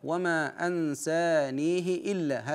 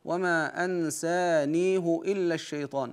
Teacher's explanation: حيث قراها ورش بكسر الهاء وما ان سانيه الا هكذا وقراها حفص بضم الهاء انفرد بضم · وقراها حفص بضم الهاء انفرد بضم الهاء فيها